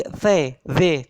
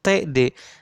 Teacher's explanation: Sama-sama menempelkan lidah di alveolar atau di gusi atau di pangkal lidah.